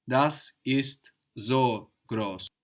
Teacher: So the S sounds like a Z.